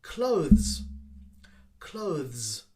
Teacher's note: followed by a z sound or a z sound clothes clothes so the th is very short sound followed by a quick z sound